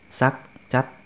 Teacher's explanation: semuanya inilah tinggi karena konsonan rendah akhiran mati dan huruf vokalnya pendek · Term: nada tinggi